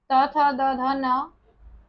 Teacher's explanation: हिंदी की दंत ध्वनियां हमारी त थ द ध न है